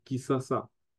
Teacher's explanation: on a même fait sauter le N nasal et le SH devient S. Et on utilisera plus souvent le S comme dans le lingala de la capitale.